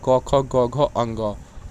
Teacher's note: होते हैं चार प्रकार में पहला प्रकार आपका स्पर्श व्यंजन तो इन व्यंजनों के उच्चारण में हवा उच्चारण स्थलों को स्पर्श मात्र करती है